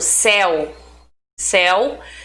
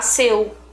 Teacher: o E e o U, eles apresentam um som mais aberto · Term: ditongos abertos